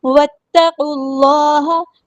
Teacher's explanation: واو کو ہم نے تا کے ساتھ ملا دینا ہے، حمزۃ الوصل ہمارا ڈراپ ہو جائے گا. تا باریک لائٹ لیٹر ہے، قاف ہمارا ہیبیٹر ہے، پورا ادا کریں گے. · قاف کو ہم نے لام کے ساتھ ملا دینا ہے، حمزۃ الوصل ہمارا ڈراپ ہو جائے گا. اللہ کا جو لام ہے وہ ہیوی ادا کریں گے